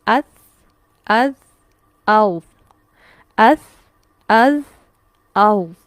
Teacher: दांतों की टिप को जाके लग रही है जुबान इसलिए इनके अदा करने में नरमी है इनको शिद्दत से अदा नहीं किया जा सकता सा को हम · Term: लिसा विया